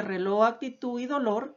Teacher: llevan la mayor fuerza de voz en la última sílaba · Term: palabras agudas